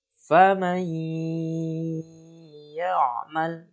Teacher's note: Bisa dibaca faman ya'mal, ditahan dengan gunnah 2 harokat